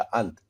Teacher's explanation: अनुस्वार मतलब nasal sound, पूर्ण ध्वनि नाक से निकलती है